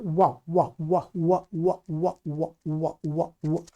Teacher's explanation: जो वकार है वह, इसका स्थान माना गया है दंत और ओष्ठ